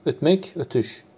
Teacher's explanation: Türkiyə türkçəsində bu sözün mənası fərqlidir. Amma burada da Kar samit Cingiltili samitə değişmir.